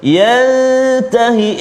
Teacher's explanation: Yang kedua yantahi, ikhfa hakiki, dengung dua harakat